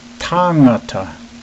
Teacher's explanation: It's important to try not to accentuate the G, as in sang. It rolls evenly and smoothly into the same sound, as in tangata. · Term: NG sound